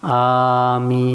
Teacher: a itu dua ketuk Min bisa sampai enam ketuk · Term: pengucapan Amin yang benar